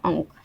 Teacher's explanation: जैसे यहाँ पे अंक, क के पहले क्या लगाएं, अ है, क के पहले वर्ण अ है, अ के ऊपर हम लोग अनुस्वार लगा दिए तो यहाँ बीच में क्या आ गया, अंगा। ये अनुस्वार को हम लोग अंगा के रूप में उच्चारण करते हैं